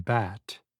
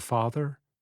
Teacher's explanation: ah as in bat which is a front vowel and instead are making a sound like the back vowel ah of the word father think of moving the sound forward the front vowel should resonate